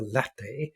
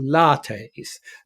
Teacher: There's this lengthening of the vowel to correspond to the English notion that short vowels are signs of lack of class and elegance in language.